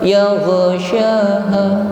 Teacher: suaranya ini masih ngalir, tidak boleh memantul atau putus · untuk huruf ghain yang kita pastikan bunyinya tafkhim, yaitu tebal